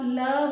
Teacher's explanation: जीभ के दोनों साइड से बगल से आवाज निकलती है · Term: पार्श्विक वर्ण